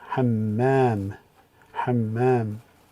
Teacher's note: shadda means that we double the sound. So it's ha, mim, ham, and then mim with the fatha, hamma, and the alif, hammam, hammam.